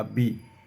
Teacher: इस छत्तीसगढ़ में महाप्राण ध्वनियों का अल्प प्राणीकरण अधिक होता है।